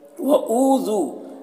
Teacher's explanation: او اور ذو دونوں میں واو مدہ ہے، دونوں کو ایک الف کے برابر کھینچ کر پڑھیں گے